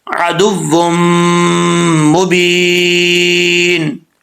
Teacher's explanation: میم آ رہا ہے تو ایک الف کی مقدار غنہ بھی کریں گے